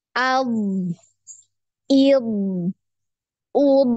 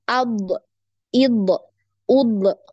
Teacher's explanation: suaranya mengalir kemudian nafasnya tertahan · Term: dialirkan